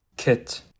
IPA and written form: kɪt (KIT)